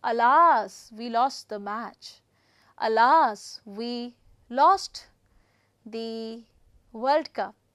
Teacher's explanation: I'm using the falling intonation to express my grief